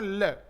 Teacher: अथवा दोनों तरफ पार्श्व यानी कि किनारा बना लेती है जिससे उच्चारण करते समय जीभ के दोनों किनारों यानी पार्श्व से होकर वायु बाहर निकलती है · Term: पार्श्विक वर्ण